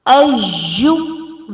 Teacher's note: we match hamza with ya very strongly because it's tashdid or shad at ya.